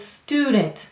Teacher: we drop that yes sound and it becomes student